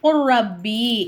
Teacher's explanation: பாவ கொண்டு வந்த ரால ஜாயின் பண்ணி குர் ரப்பி அப்படின்னு நம்ம சொல்லணும் அதே மாதிரிதான் இங்கயும் மஹத்து மஹத்து இங்கயும் அதேதான் சத்து பெற்ற எழுத்துக்கு முன்னாடி